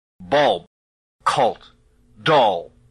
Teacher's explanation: вам будет часто казаться, что канадец или американец произносит звук, очень похожий на русский «о», там, где должен быть ударный шва. Из-за такого ощущения некоторые из вас иногда даже не поймут смысл сказанного.